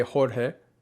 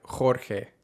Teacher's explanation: the j and g sound in a word like jorge is a little bit harsher or a little bit stronger than it is in other countries